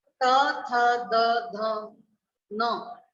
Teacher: यहाँ बोलते समय हमारी जीभ है वो दांतों से टकरा रही है, आगे के जो दांत है उनसे टकरा रही है